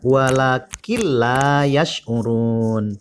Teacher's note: Ada nun mati bertemu dengan huruf lam. Jadi masuk dengan tanpa berdengung. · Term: idgham bila guna